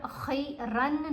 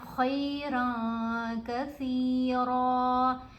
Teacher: تو یہاں ہم نے جب بھی آپ نے نون ساکن یا نون تنوین کے بعد ان حروف میں سے کوئی حرف دیکھنا ہے تو پھر آپ نے نون کی آواز کو ناک میں چھپا دینا ہے۔ یہاں تنوین کی نون ہے، خیرن میں جو نون ہے نا اس کو ہم نے ناک میں چھپانا ہے اور ہم نے پڑھنا ہے خیرًا کثیرًا۔ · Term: احفا